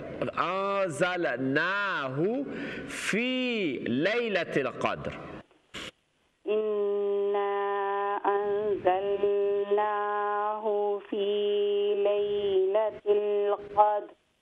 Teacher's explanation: اور اس کے علاوہ فا کے بعد یا مدہ ہے فی، اس کو بھی 2 حرکت